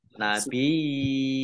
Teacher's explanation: Nun tasdid dibaca mendengung atau gunah, ya, ditahan 2 harokat.